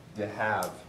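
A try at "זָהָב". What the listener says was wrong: You're speaking Aramaic. It's not duh, it's z. Zahav. Zahav. Zayin with a schwa, hey with a pathic, and a bait.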